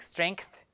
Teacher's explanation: A lot of people would add a K, like strength, like that, because K is vila, and it matches with the place of articulation of N with the tail.